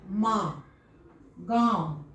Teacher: अनुनासिक में मुंह से और फिर नाक से साथ साथ ध्वनि निकला। उसके पीछे पीछे मुंह के साथ साथ उसके पीछे पीछे नाक से भी ध्वनि आ रहा है।